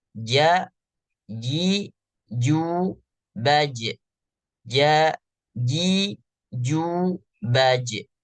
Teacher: huruf jim juga punya sifat qalqalah yang berarti punya sifat pantulan.